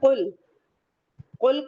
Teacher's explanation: یہ قاف مفخم لیٹر سے پورا ماؤتھ بھر کے پڑھیں گے